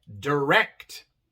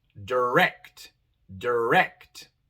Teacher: en esta palabra la segunda es la tónica la acentuada